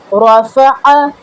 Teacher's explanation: ذکر، اسی طرح سے رفع، را کو پر، فا اور عین را سے تھوڑا سا ڈفرینٹ، عین کو واضح وسط حلق سے ادا کریں گے